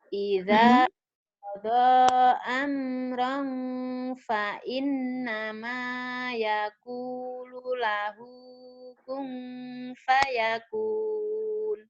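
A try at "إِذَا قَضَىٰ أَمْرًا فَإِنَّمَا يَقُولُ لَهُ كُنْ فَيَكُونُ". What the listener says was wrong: Oke, boleh digandeng nadanya. Jadi fa innama gitu. Jadi jangan terpisah kalau udah mau lagu. Fa innama yaqulu lahu kun fayakun. Coba gandengin.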